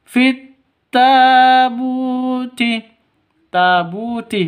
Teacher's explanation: Bu panjang 2 ketukan karena ada waw mati diawali dengan dhammah. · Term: mad asli